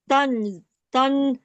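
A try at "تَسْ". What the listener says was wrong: نون نہیں ہے، تا سین سے مل رہا ہے.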